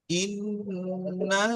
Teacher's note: আর নুনের উপরে তাসদিদ এসছে, কি হবে? গুণনা করে পড়তে হবে।